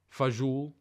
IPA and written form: fəˈzuːɬ (beans)